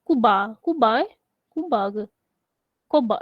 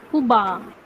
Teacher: Dia tak ada diftong au tu.